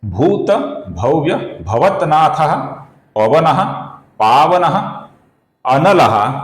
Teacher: इसका जो विसर्ग है, इसके आगे प आने के कारण विसर्ग का हल्का सा फ ऐसा उच्चारण हम करेंगे। आगे भी पवनः का जो विसर्ग है, इसके आगे भी पावनः का प आया हुआ है, तो इधर भी हल्का सा फ ऐसा विसर्ग का उच्चारण हम करेंगे। पावनः का जो विसर्ग है, इसके आगे शब्द है अनलः।